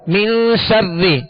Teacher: یہاں غنہ کریں گے نون پر، یہ اخفا کا غنہ کہلاتا ہے